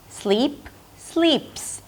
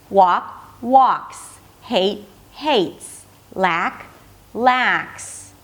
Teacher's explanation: The suffix is less important. So what the mouth does and the brain does is just change the voicing quality of the S suffix. So instead of making it a Z sound, it's going to sound like an S.